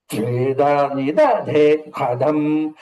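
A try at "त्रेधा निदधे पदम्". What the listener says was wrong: రేధా ధా వస్తుందండి. రేధా నిదధే పదం త్రేధా నిదధే పదం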